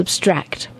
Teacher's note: when it's an adjective you put the emphasis or stress on the second syllable